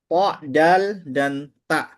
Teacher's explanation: ujung lidah dengan belakang gigi seri atas